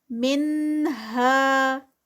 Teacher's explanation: نون ساکنہ ہے لیکن اس کے بعد حروف حلقی ہے تو یہاں پر اظہار ہوگا، من میں اخفا نہیں ہوگا